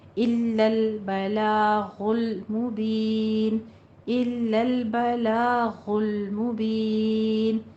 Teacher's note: لام کو باریک رکھنا ہے، غین کو پر پڑھنا ہے